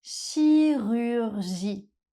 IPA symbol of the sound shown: y